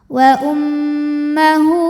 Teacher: Wa ummahu hu dihukumi dengan mad silah qasirah karena ada ha damir yang diapit dua huruf hidup dan huruf setelahnya selain hamzah. Maka ha damir ini kita panjangkan dua harakat